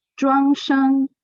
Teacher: the pronunciation are first tones. It's the high pitch. It's going up.